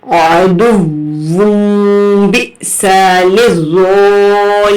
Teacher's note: جھٹکا بھی دیں گے کیونکہ حمزہ کے اوپر جزم ہے